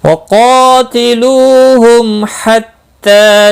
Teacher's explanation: میم سکن کے بعد ہا آیا ہے، اظہار شفوی ہوگا، تا کے اوپر کھڑی زبر ہے، ایک الف کے برابر کھینچ کر پڑھیں گے، یعنی میم کو ظاہر کر کے پڑھیں گے۔